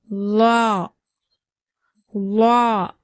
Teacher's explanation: லா உடைய மஹரஜ் பிறப்பிடம் வந்து சா போன்ற எழுத்துக்களுடைய மஹரஜ் பிறப்பிடம் மாதிரியே நம்ம நாவினுடைய நுனி மேற்பர்களுடைய ஓரத்துல படும்போது லா உடைய உச்சரிப்பு வந்து வெளிப்படுகிறது